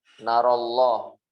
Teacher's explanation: ketika ada imalah ketemu dengan lafzul jalalah, imalah kubro di sini, maka dibaca tarqiq. Dibaca tarqiq.